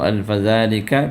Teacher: ذال ہے اور زبان کی نوک سے اس کو ادا کرنا ہے